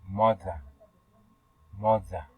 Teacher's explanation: Your manner of articulation is fricative, and your place of articulation is lingual dental, and it is a voice consonant sounds, and your example is mother, mother, and segundo is ida, ida.